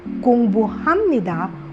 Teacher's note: when 비읍 and ni은 meet, the sound of 비읍 transforms into 미음 due to a phonological rule called nasalization.